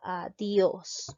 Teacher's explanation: Nos damos cuenta que la mayor fuerza de voz recae en la sílaba Dios